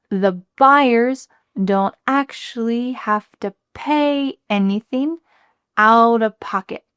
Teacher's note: So we're going to emphasize buyers, pay anything, and pocket.